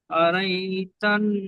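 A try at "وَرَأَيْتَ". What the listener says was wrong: আরাই নয়, আরাই নয়, পরিষ্কার করেন, ওর আই ওরাই নয়, ওর আই, ওর আই ওয়াউ জাবার ওয়া, র জাবার র, ওর, হামজা ইয়া জাবার আই, ওর আই, নয়, ওর আই, হামজা ইয়া জবর আই।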